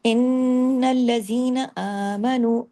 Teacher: آپ دیکھیں اس سے پہلے والے حرف پر پیش ہوتی ہے، جب واو مدہ ہے نا 2 حرکات کھینچتا ہے